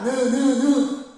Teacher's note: 니은은 비음이잖아. 느느느 코가 울리죠? 느느느 그래서 비음 파라고 하는 겁니다.